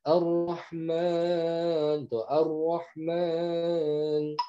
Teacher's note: Yang tafkhim itu dia pangkal lidahnya naik.